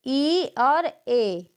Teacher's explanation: जिन स्वरों के उच्चारण में जीभ का अगला भाग ऊपर नीचे होता है